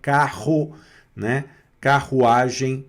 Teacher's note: É sempre o R aqui, ó, na garganta com o som do nosso dois Rs, né? Carro, né? Carruagem, né?